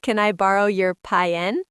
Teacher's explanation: In the south of the United States, they take a one syllable word like pen and turn it into two syllables, pi-en.